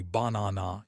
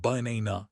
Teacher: The first and last A are schwas. They are dead vowels. If you pronounce them clearly, banana, you sound foreign.